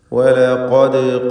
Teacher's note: ദാലിൻ്റെ സുക്കൂൻ ഖൽഖല സുഗ്റ നൽകി ശബ്ദം ഹറക്കത്ത് പോലെ ചലിപ്പിക്കണം